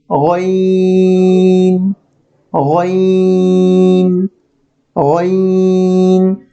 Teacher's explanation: এখন যে হরফটি দেখতে পাচ্ছেন, এই হরফটির নাম হলো গইন। গইন উচ্চারণের নিয়মটি হলো কণ্ঠনালীর উপরিভাগ হতে নির্গত হয়